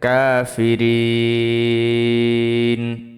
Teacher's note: ফাজের ফি, রয়েজের রি, নুন জবর না, কাফিরিনা। থামলে তিন আলিফ টান হবে, মধ্যে আরজি